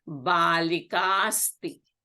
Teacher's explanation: Balika ends in A. Asti begins with A. These two become a long A. So this becomes Balikasti here.